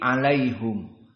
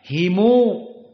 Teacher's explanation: Yaqub dibaca alaihum dengan dhammatul ha. Dan Ibnu Katsir dan Abu Ja'far dibaca alaihimu.